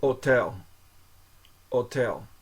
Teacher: Okay, the H at the beginning isn't pronounced. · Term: H is not pronounced